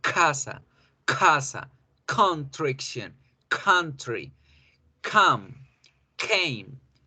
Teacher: tenemos que hacer la explosión para que la lengua en su parte gruesa toque el paladar o la parte suavecita del paladar